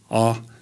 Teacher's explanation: a in a central low position